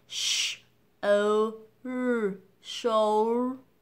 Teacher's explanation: như vậy âm tiết đầu tiên sẽ được nhấn là âm /'∫oʊl/ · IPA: /'ʃoʊldər/